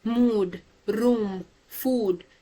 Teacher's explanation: you notice that your mouth forms this circular or rounded shape